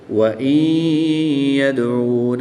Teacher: نون ساکن کو یا مشدد میں مدغم یعنی شامل کر کے پڑھیں گے۔ نون ساکن کے بعد یا مشدد ہے، تو یہاں پر ادغام مع الغنہ بھی ہوگا، یہاں پر غنہ کر کے بھی پڑھیں گے۔